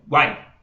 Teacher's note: o Guai, aqui é formado por uma consoante, uma semivogal, uma vogal e outra semivogal